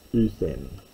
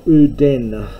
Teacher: Now uthen is for uden, and by this stage the pronunciation of delta had been softened into a th sound, as it is in modern Greek